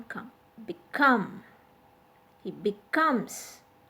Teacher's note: be is a prefix here and this is weak and that's why the stress is on come